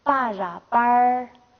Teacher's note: 如果后加字是▁ra▁的话，一定要是延长。那么它有时候发这个颤音▁r▁的音